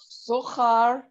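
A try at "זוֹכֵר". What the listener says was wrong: Zo. Zo. Not char, but. What's your vowel? Zocher. Zocher.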